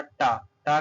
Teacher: टा जो है दोस्तों मूर्धा के अंतर्गत आता है